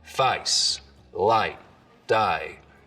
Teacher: the diphthong in face starts real low, down around ah, I. Face, light, die. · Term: face lowering